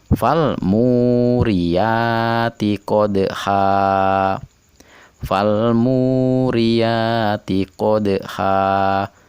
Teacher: Dal pada kata qodha dipantulkan tidak begitu keras karena dia ada di tengah kata, dan ini disebut dengan qalqalah sugro.